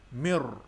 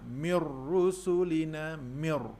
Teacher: Bunyi nun masuk ke dalam bunyi ra, mir. Dan pada bacaan di sini tidak ada apa-apa yang merumitkan kita, kerana huruf ra di atasnya ada tanda sabdu. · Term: idgham bila gunnah